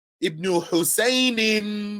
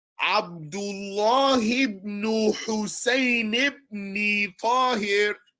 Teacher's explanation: if you keep going, you drop that tanween and you just keep the kasra and you keep going. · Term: drop the tanween